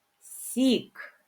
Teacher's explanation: перший звук с він М'який приголосний